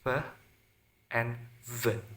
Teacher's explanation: sounds made using the lower lip and upper teeth such as F and V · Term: labiodental